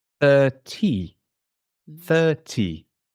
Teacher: the letter T is much more clear in a British accent I use a t sound 30 30 30 it's different okay